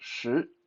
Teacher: tongue slightly away from the roof of your mouth so you make that whistling sound